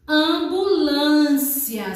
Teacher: E a tonicidade, ela seria o quê? Paroxítona, porque a sílaba mais forte é a penúltima